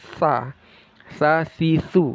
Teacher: ujung lidah makhrajnya yang menempel ke ujung gigi seri atas. Tsa tsa tsu seperti digigit ya tsa.